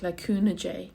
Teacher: In Ulster, they actually say it like a U, le cúnú dé, and the day is more like a J sound